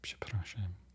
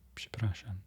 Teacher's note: So you have a burst of air before you even begin to say the word